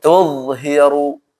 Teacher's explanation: pangkal lidah itu keangkat artinya dia ke atas ke atas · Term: irtifa